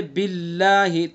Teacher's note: اگر اللہ کے لام سے پہلے زیر ہوگا تو اللہ کے لام کو کیسا پڑھیں گے؟ باریک پڑھیں گے